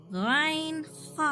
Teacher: ऊपरी हिस्से से निकलेगा गाइन खा, शुरू हलक से जो मुंह की तरफ है 2 हुरूफ गाइन खा निकलेगा, ठीक है, गाइन खा।